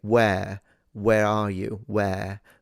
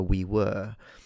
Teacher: I personally believe that the reason why that exists was maybe to differentiate where in the sense of w h e r e from the past tense of the verb to be w e r e. Now, in my speech, in the way I speak, I differentiate in vowel quality, which is something that I think quite a few people do.